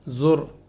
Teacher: را یہاں پر پر ہوگی چونکہ را سے پہلے والے حرف کے اوپر پیش ہے